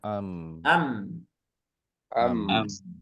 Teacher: Ikhwan ketika kita menghidupkan membaca mim sukun maka dia tidak otomatis begitu kita rapatkan bibir hurufnya habis suaranya enggak tapi ada aliran sedikit suara